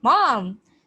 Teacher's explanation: And then the last one is, if your mom said something that offended you, you might yell out in surprise, "Mom!" like bit angry or like offensive way, "Mom!" with a shocked, falling tone of disapproval